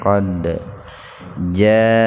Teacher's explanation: Qad jaa, mad wajib muttasil, mad tabi'i alif bertemu hamzah dalam satu kata. Dibacanya luar biasa, tidak tabi'i ya. Artinya panjangnya 4 sampai 6 ketukan.